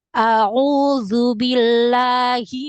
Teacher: Huruf zal benar-benar ujung lidah nampak keluar ya sedikit. Dan dia hanya menyentuh ujung gigi seri.